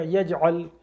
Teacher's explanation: آیت نمبر 2، الم یجعل کیدہم فی تضلیل۔ الم یجعل، جیم آیا ہے، یا جیم سے مل رہی ہے، قلقلہ ہوگا · عین کو حلق سے نکالیں گے، لام سے ملا دیں گے